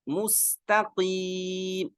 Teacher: رو، طول، تل نو، سراتل غلط، صراطل میم کی پیش کو باریک، مستقیم، قاف موٹا، آگے قیم کو لمبا کریں گے کیونکہ یا مدہ ہے